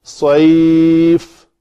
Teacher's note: صاد کو پر پڑھیں گے، پتلا کریں گے تو سین بن جائے گی، معنی میں تبدیلی آئے گی